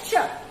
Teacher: जीभ जो है मूर्धा को छूती है, तब आप उच्चारण करते हैं श, इसलिए इसका नाम है मूर्धन्य श।